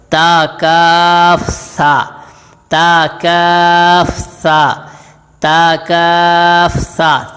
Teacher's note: سا کا مخرج ہے زبان کی نوک اوپر والے دانتوں کے کناروں سے لگے تو یہ ادا ہوگا